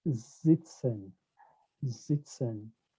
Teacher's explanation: if you listen to me pronounce the word singen, I pronounce the S as a Z